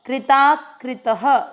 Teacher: त में अ की मात्रा, इसलिए विसर्ग को पढ़ेंगे ह